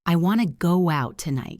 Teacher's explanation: So your mouth naturally puts a W sound in the middle. It becomes go out, go out.